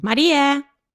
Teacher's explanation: una subida tonal en la tónica con el pico alcanzado durante la sílaba tónica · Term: vocative chant